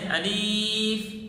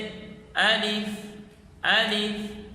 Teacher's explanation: صحیح اس کی ادا یہ ہے کہ الف کو جوف دہن یعنی منہ کے خلا سے، حمزہ کو اور لام کو بغیر کھینچے فا کو نرمی سے ادا کرنا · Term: صحیح ادا